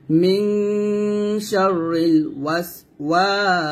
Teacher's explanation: সিন যেহেতু বাতাস বের হবে মানে হামসে হরফ, তাই আমরা এখানে ওয়াকফ দিলে বাতাস বের করব।